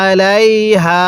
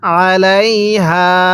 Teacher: আলাইহা এর মধ্যে তিন আলিফ টানতে হবে